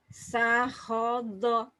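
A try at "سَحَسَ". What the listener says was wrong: Sahoso bukan do Bu.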